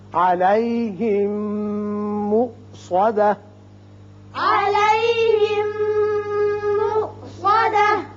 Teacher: یہ حمزہ ساکن ہے، جھٹکے سے پڑھیں گے اور تا ساکن ہو کر ہا کا مخرج ادا کریں گے.